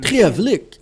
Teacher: a word with a grave accent, with this melodic accent.